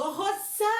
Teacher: O zã é a sílaba tônica. É aquela sílaba que é mais forte, mais pausada pra falar. Então, pra descobrir a sílaba tônica, tem uma de Rochelle.